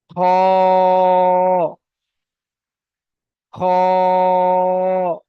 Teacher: পুর অক্ষর অর্থাৎ এটা মুখ গোল করে আমাদেরকে পড়তে হবে।